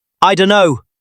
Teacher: The T at the end of don't is gone.